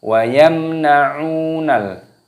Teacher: Ainnya dibaca panjang, ada wawu sukunya, dipanjangkan 2 ketukan mad tabi'i.